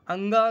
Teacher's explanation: अंगा का उच्चारण स्थान क्या है नासिका भी है और कंठ